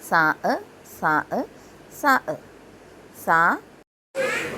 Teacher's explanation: നാക്കിൻ്റെ തലയും മേൽ മുൻപല്ലിൻ്റെ താഴെ അറ്റവുമാണ് സാഇൻ്റെ മഖ്റജ്